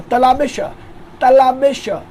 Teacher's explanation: तो तलाबेश बोलने के लिए आपको ताल्लुक की तरफ जीभ को ले जाना पड़ेगा